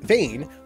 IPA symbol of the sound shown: eɪ